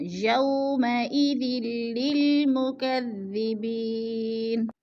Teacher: یالین کو ہم نے لمبا بھی نہیں کرنا اور جھٹکا بھی نہیں دینا. یا ساکن سے پہلے وہ کے اوپر زبر ہے تو یالین.